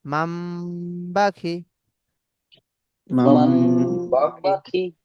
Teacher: নুন সেকেন্ডটা মিমের দ্বারা পরিবর্তন করে গুন্নার সঙ্গে পড়তে হবে, একে ইকলাব বলে